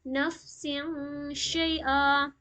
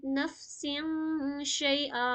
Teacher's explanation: شین کو ہم بالکل باریک پڑھتے ہیں، اسی لیے یہاں پہ غنہ بھی باریک کریں گے ، جیسے نفس شیئا، یہاں پہ زیادہ لائٹ ہیوی نہیں کریں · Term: اخفا